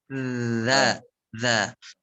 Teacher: Akan tetapi kalau huruf dzal dia cenderung lebih tipis. Dza, dan posisi belakang lidahnya itu dia turun ke bawah, turun sehingga tipis dzalnya.